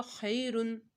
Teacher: خا حرف مستعلیہ میں سے، خا کو موٹا پڑ جائے گا